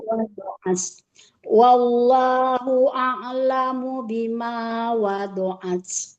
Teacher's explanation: Jangan wada ya, wado. Huruf dotnya jangan jadi dal.